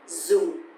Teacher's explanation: Dùng, dùng. And also because the tone mark here is dấu huyền, so it's going to be down a little bit